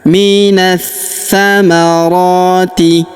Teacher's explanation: huruf na langsung sambung ke huruf tha yang berharokat tasydid, kita tahan dan kita tekan. Minas samarati, alif lamnya tidak dibaca, alif lam syamsiyah. · Minas samarati, alif lamnya tidak dibaca, alif lam syamsiyah. Minas samarati, huruf ra kita panjangkan 2 harokat karena di atasnya terdapat tanda alif kecil.